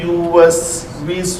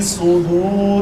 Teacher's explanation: سین اور صاد میں فرق کرنے کا طریقہ یہ ہے, سین پتلی رہتی ہے اور صاد موٹا ہو جاتا ہے